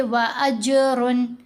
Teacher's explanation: عین ان حروف میں شامل ہے، تو یہاں دیکھیں یہاں ہے نا عین، یہ بھی عین، تو یہاں ہم پڑھیں گے وَأَجْرٌ۔ اظہار میں نون کو ظاہر کر کے پڑھا جائے گا اور جلدی پڑھا جاتا ہے